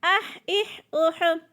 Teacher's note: حا دو قسم کا ہوتا ہے، حا اور ہا۔ یہ باریک والا حا ہے، اس کو حلق سے ادا کرنا ہے اور باریک کر کے پڑھنا ہے